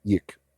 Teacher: preceding the dalet is a silent schwa, which makes no vowel sound at all when it's silent like that